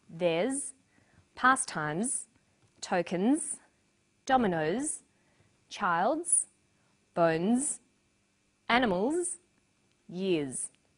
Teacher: the final s is pronounced z